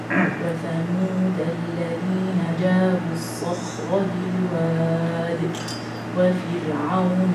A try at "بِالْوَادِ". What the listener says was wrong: بالواد. Why are you making the right light? ساكنة has كسرة before it and has حرف استعلاء after it. So we have to make it light.